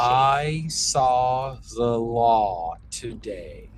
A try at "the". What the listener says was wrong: The was a little lazy. Let's try that again. I saw the law today. Yes, we definitely want the air to be focused throughout. So even when we have something that is really open, we still want that air to be having this momentum to it, this steady flow and pressure that never lets up.